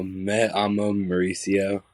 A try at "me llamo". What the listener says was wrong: Llamo. It might have been your sound, but it looked like me amo, and that means I love myself. It's yamo. You got to get the two L's, make the Y sound.